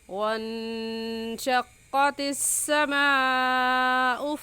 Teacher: کیونکہ حروف مدہ کے بعد حمزہ اسی کلمے میں ہے، اس وجہ سے اس مد کو مد متصل اور مد واجب کہیں گے، اور اس مد کو 4 الف کے برابر کھینچ کر پڑھیں گے، نہ اس سے کم اور نہ ہی اس سے زیادہ۔